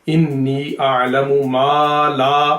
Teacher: अब देखें यहाँ ये दोनों हरूफ़े मद्दा है, मा और ला, इन दोनों को लंबा करना चाहिए।